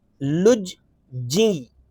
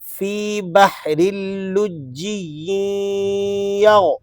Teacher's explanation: لام جیم پیش لج، ایک دفعہ مشدد حرف جیم پڑھا گیا، اور دوسری دفعہ اس کی ادائیگی ہوگی جب ہم جیم کو آگے یا سے ملائیں گے